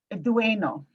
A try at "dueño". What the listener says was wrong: is it an enye? Does it got a little mark over that N? Like there's a Y after that N?